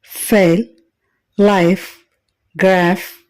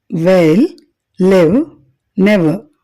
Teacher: వీటిని పలికేటప్పుడు పై పండ్లు క్రింది పెదవిని నొక్కుతాయి